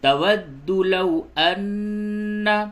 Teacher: واو ساکن سے قبل زبر ہے، اس جگہ پہ واو لین ہے، نرمی کے ساتھ پڑھیں گے